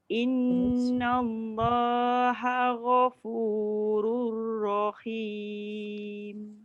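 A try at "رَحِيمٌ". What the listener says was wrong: Ini bawah lagi. Rahim takut dia jadi kha. Rahim ha. Rahim.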